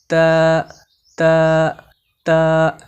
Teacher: তা হরফকে জিহবার আগা উপরের দন্ত তালুর সঙ্গে লাগিয়ে সিকন করে পড়তে হয়